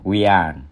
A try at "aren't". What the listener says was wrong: We aren't. Aren't. Nên bắt âm tờ đây. Aren't.